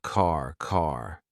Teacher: my tongue is flat against the roof of my mouth to make the D but it's not coming out